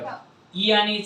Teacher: ई आणि ईचा उच्चार स्थान आहे तालव्य